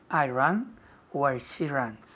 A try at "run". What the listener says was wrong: Run, no ran. Run. Es un poco cerrado. Tienes la boca cerrada.